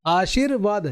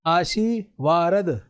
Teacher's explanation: श के आगे इस र का उच्चारण हो रहा है। लेकिन ये अपने आगे वाले वर्ण के ऊपर लगेगा।